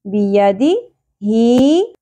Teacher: یہ تینوں حرکات زیادہ نہیں کھینچی جائیں گی. بیدی ہی ہا کے نیچے کھڑی زیر ہے ایک الف کے برابر کھینچنا ہے. بیدی ہی یہاں پر بھی سنگل زبر ہے ان کو زیادہ نہیں کھینچنا.